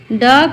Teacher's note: इसका उच्चारण जीभ के मध्य भाग को मूर्धा यानी सिर के ऊपरी भाग से स्पर्श करा के किया जाता है।